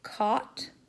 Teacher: as in caught, so that's going to be low open